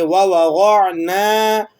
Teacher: نون کو آپ کھینچیں گے، کیوں؟ اس لیے کہ اس کے بعد الف مدہ آ رہا ہے